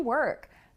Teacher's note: So it's interesting that in work, we also have that R colored vowel.